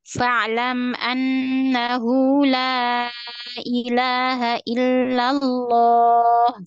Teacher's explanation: Coba maka ditipiskan lagi lamnya. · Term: lamnya ditipiskan